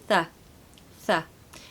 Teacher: So we need an unvoiced TH sound, which is really achieved by putting the tongue between the teeth. I never usually talk about the physiology of where to put your tongue, but on this particular sound it's pretty important because if you don't put your tongue between your teeth, you're not going to make the sound.